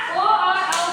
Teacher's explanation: ओ और औ का उच्चारण स्थान क्या है कंठ और ओष है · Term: कंठ ओष वर्ण